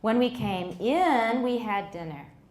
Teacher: So he pauses at in. The American speaker does this by prolonging the word in, which starts at the peak of the pitch contour.